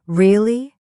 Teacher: really? With a rising tone. It's another way to show surprise.